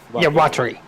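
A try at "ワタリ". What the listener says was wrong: Not watery. Not watery. Watari. Watari. Watari.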